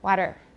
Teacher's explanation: Then it turns into a voice sound, but it's not a D, it's just a very quick contact between the tongue tip and the alveolar ridge. Water touches and it goes very fast. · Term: tap